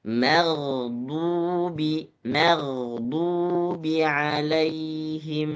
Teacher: gho huruf tebal ma huruf tipis